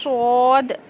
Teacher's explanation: जुबान का कोनी नीचे के दो दांतों के जड़ में लगाने से सद अदा होता है और जुबान की करवट ऊपर के चार दानों के मसूड़ों में